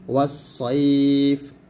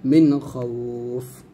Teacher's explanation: লিনের হরফের পরের হরফে থামলে সে লিনের 1 আলিফ টেনে পরের হরফে সাকিন হয়ে যাবে